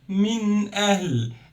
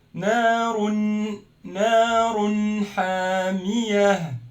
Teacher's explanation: It's min ahl, a clear noon, clear alif, there is no gunna